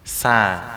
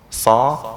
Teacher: Sa tersenyum, so nggak pakai senyum